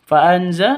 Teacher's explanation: nun mati bertemu dengan zain cara bacanya samar didengungkan siap-siap ke huruf senya karena bacaan ikhfa hakik seperti itu.